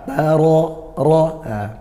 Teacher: baca tebal dari mana tebal yaitu dari pangkal lidah dinaikkan ya bangal lidah naik alam Ro gak perlu memonyongkan bibir atau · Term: tafkim